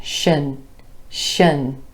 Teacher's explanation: We're going from the SH sh sound. There's a schwa vowel and then the n